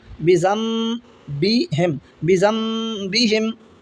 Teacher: नून साकिन के बाद में बा है तो नून को मीम से बदल कर पढ़ेंगे। बिज़म्बिहिम, बा ज़ेर बी, ज़ा नून ज़बर ज़न, सॉरी, बा ज़ेर बी, ज़ा को मीम से मिलाएंगे, ज़ा मीम ज़बर ज़म, बिज़म्बिहिम, बिज़म्बिहिम। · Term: इक़लाब